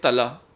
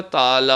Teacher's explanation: تلا میں تے کے اوپر زبر ہے، ہم ذرا بھی اس کو زور دے دیں تو کیا ہو جائے گا؟ تالا ہو جائے گا